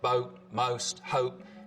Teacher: So the vowel sound in boat, most, hope, starts with the tongue further forwards in the mouth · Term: goat fronting